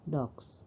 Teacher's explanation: ketika dimasukkan ke dalam bentuk pronunciation atau pengucapan, maka S ini diucapkan menjadi Z atau Z. Jadi ini merupakan satu alomorf dari kata dogs.